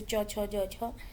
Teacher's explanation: तालव्य जो छोटी तालु में उच्चारित ध्वनियां